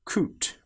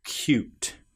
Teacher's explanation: we get the sound of the y before the vowel and after the very first consonant